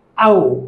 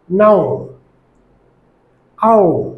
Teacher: যখন আমরা আও উচ্চারণ করব তখন লো ফ্রন্ট থেকে হাই ফ্রন্টে যাবে জিহ্বাটি আর ওপেন টু রাউন্ড, অর্থাৎ মুখটা প্রথমে খোলা হবে তারপরে রাউন্ডেড হবে।